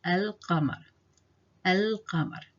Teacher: you'll notice the lam here is pronounced. It's not silent. It's pronounced. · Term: al-lam al-Qamariyya